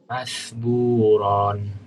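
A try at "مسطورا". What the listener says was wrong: Oh, enggak panjang. Masburon. Tanwin kalau enggak diwakaf enggak panjang.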